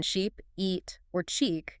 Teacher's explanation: When you make the long sound, as in sheep, eat, or cheek, your mouth is stretched wide. It's almost like a forced smile.